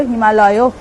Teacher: অ আর আ মিলে একটা আ তে পরিণত হলো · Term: সন্ধি